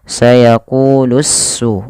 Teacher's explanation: alif dan lamnya langsung diidghamkan kepada huruf sin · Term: alif lam syamsiyah